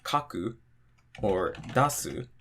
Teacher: counting from the end of the word, the drop is after the second to last syllable. So for example, if we had kaku or dasu, so counting from the end, we have 1, 2, the drop is going to be after the ka.